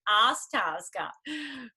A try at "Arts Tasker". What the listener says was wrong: No, it's Arts Tasker. No, you're saying Ask Tasker. It's Arts Tasker, like Air Tasker.